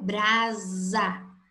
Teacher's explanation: o fonema S. E na palavra brasa, essa mesma letra, ela recebe o som de Z.